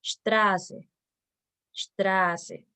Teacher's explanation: Ahí podemos ver cómo la vocal se alarga ya que antepone a la letra S. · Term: vocal larga